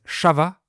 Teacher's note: But the “S” sound is pronounced “Ch”, so they say “cha va” to mean “ça va”. And the 'a's are pronounced like 'o's.